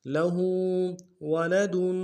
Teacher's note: لہو میں ہا کے اوپر الٹا پیش ایک امداد میں کھینچیں گے